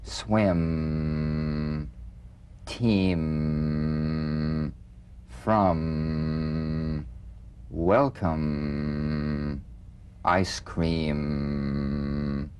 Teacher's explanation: be very relaxed almost puffy feeling not pressed together or tight feel a vibration in the fleshy part of the lips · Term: the M